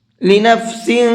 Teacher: یوم لا تملک نفس لنفس شیئا، لنفس، سین کے نیچے تنوین ہے اور تنوین کے بعد میں بڑا شین ہے، بڑا شین بھی اخفا کے حرفوں میں سے ہے، اس لیے تنوین کے اندر اخفا کر کے پڑھیں گے، ہلکا سا ناک میں آواز کو چھپا کر کے پڑھیں گے